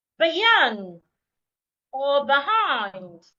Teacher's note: in the word Beyond or behind it is the second part that I need to say louder longer and clearer